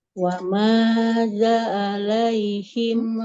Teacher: Wa ma zalnya dipanjangkan, ada fathah bertemu dengan alif.